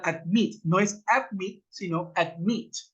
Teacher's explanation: admit, la última sílaba tiene el acento al final, admit, no es admit, sino admit.